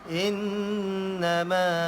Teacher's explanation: Innama in dengung dua harakat, in wajibal gunnah. Innama ma panjang dua harakat, mad asli.